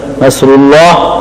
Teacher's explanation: زبان کا درمیان تالو سے چمٹ جائے، صاد میں صاد موٹا ہو. نصر صاد کے ساتھ اللہ کی مدد، نصر اللہ اللہ کی مدد.